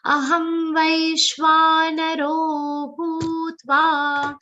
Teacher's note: Aham vai is a long sound ending with a soft sh sound.